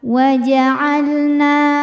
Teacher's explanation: sebab ada Alif didahului harakat fathah maka panjangkan dua harakat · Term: Mad thi'i